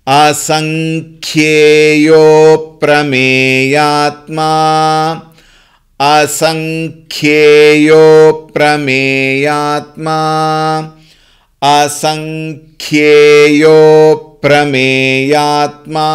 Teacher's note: Mahaprana added with ye.